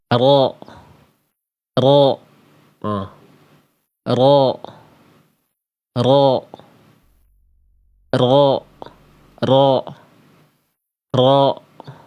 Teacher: Huruf ro itu dilafalkan dari punggung lidah.